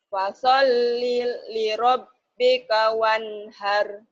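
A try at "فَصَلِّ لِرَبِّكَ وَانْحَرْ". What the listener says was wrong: Bagus, linya jangan ada jeda. Linya jangan ada jeda. Fasholli li rabbika wanhar. Jangan putus. Fasol li rabb segera. Fasol li rabbika wanhar. Jangan fasol li rabb. Jangan putus. Jangan putus. Fasol li rabb. Fasol li rabbika wanhar. Fasol li rabb, dilatih tuh ibu dan bapak. Jangan ada jeda. Fasol li rabb. Fasol li rabb. Fasol li rabb. Fasol li rabb.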